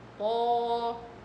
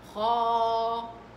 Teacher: في فرق بين طا خا، الخا منفتحة، الطا مطبقة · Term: التفخيم المطبق